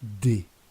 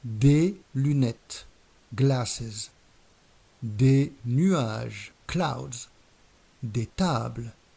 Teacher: we don't pronounce the final s in the plural